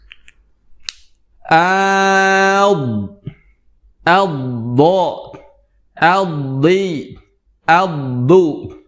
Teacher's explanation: huruf dad yang keluar dari sisi lidah kita ataupun kedua lidah kita yang kita tempelkan ke gigi gerahma atas